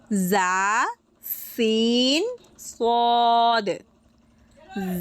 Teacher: জিহ্বার আগা সামনের নিচে 2 দাঁতের কিনারার সাথে হালকা স্পর্শ করে লাগিয়ে উচ্চারিত হবে জা সিন সদ।